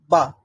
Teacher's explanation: দুইটা ঠোঁট যখন বন্ধ করে রাখি, বন্ধ করে যখন সাউন্ড এসে আমার দুইটা ঠোঁটটাকে খুলে ফেলে, বা, তখনই ব উচ্চারণ হয়, ব, অথবা আমরা বলতে পারি বা।